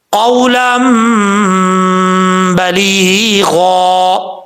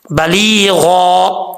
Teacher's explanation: کیونکہ مدہ ہے اس لیے یہاں پر ایک الف کی مقدار اس کو لمبا کیا جائے گا، بلیغا، غین حروف مستعلیہ میں سے ہے تو پر پڑھا جائے گا، ٹھیک ہے۔